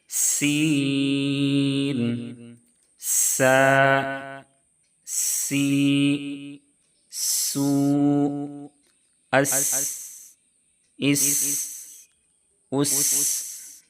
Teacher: सीन की अदायगी में पतली सीटी जैसी आवाज निकलनी चाहिए। · سین کا مخرج ہے زبان کی نوک ثنایا سفلی کا کنارہ مع کنارہ ثنایا علیہ کے، یعنی جو زا کا مخرج ہے وہی سین کا بھی مخرج ہے۔